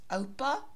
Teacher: Oupa accent is on ou